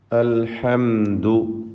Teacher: സാക്കിന മീമിന് ഇൽഹാർ ഷഫവി നൽകി മണിക്കാതെ വെളിവാക്കണം. അൽഹംദു, അവിടെ മീമ് മണിച്ചു പോകരുത്.